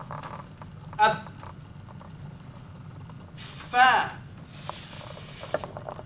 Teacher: friction, as the air moves above my lips